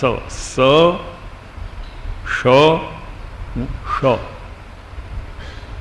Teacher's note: એમ 3 પ્રકારના સ, શ, શ ઉચ્ચાર આપ કરી જુઓ. સ બોલો એટલે ચોક્કસ જીભ દાંતને અળકશે જ તો જ સ બોલાશે. શ એ તાળવાને અળકશે ત્યારે અંદરથી ઉચ્ચાર થશે. અને શ એટલે મસ્તકના મૂર્ધ ભાગને સ્પર્શશે